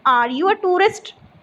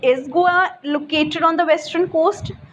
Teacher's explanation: a question that can be answered with yes or no has a rising intonation